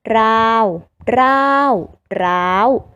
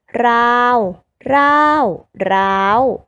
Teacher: สามารถผันได้3เสียงคือเสียงสามัญเสียงโทและเสียงตรี